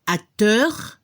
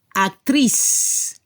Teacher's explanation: La pronunciación para el masculino se escuchó un poco la R al final, acteur, y al femenino se debe escuchar la S al final, actrice. Y no se escucha la E final.